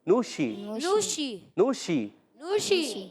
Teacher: اور نشرت, نشرت میں نون پر پیش ہے. شین کی ادائیگی تفشی ایک صفت ہوتی ہے, منہ میں آواز پھیلتی ہے